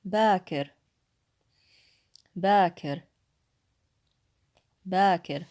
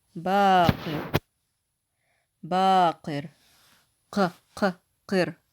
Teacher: But if I said baqir, baqir, qir, see how the whole word sounds a little bit heavier? That would be the qaf.